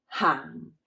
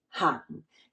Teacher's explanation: It's the 4th tone, the low falling hang.